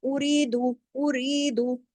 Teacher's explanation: ری کے ساتھ یا مدہ ہے، باقی ایک ایک حرکت ہے، ری کو صرف 2 حرکات کھینچنا ہے